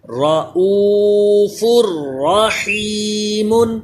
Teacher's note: دو پیش کی تنوین کے بعد را حروف یرملون لیکن اس میں غنہ نہیں کرتے